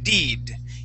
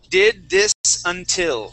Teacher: So it's a little between a short E sound, and an A sound. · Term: the short I